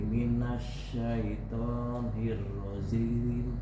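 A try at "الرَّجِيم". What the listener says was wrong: Minasyaitonir rajim. Jim, ja, bukan zim. Jim.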